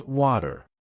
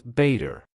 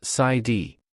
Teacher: In American English, when the letter T or double T appears between two vowel sounds in an unstressed syllable, it is not pronounced as a crisp, hard T. It transforms into a soft, rapid flap sound that resembles a light D or a quick tap of the tongue against the roof of the mouth. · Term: flap T sound